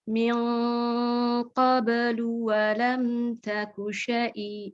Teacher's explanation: kalau dia ketemu qaf, jadi naik pangkal lidah, yang lidah belakang. Naik, jadi dia tebal.